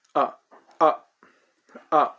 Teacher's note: So it is short, very short, and middle of the voice range. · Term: neutral tone